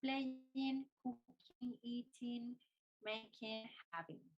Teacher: Hay que tener mucho cuidado con el sonido del ing porque la G no suena